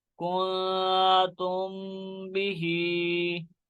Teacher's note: اکفا شفوی، کیونکہ میم ساکن کے بعد حرف با آ رہا ہے، اس لیے یہاں پہ اکفا شفوی ہو رہا ہے